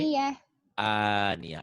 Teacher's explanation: A-nya tetap panjang ya, mad badalnya.